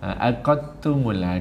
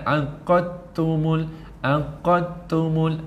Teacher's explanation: Tuan bunyi ta je. Dal tak bunyi.